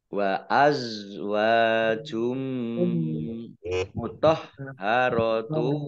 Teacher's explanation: Dhammah tanwin bertemu dengan huruf mim, bacaan idgham bi gunnah, masuk dengan mendengung, mendengung mim. Wa azwajum mutahharatu, haknya dibaca double, ada tasdidnya.